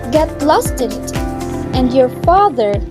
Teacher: the father is slightly rising in intonation. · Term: slightly rising intonation